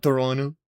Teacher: if you're from Toronto, you don't say it with a T.